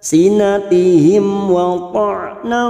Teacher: mim sukun bertemu waw idhar safawi dibaca jelas tanpa mendengung